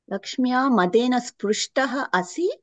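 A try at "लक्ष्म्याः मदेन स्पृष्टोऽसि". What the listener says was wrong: Lakshmyaha madena. Visarga is dropped. लक्ष्म्याः मदेन.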